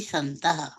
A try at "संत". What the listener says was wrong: Very, संत, संतः नहीं बोलना है, संत।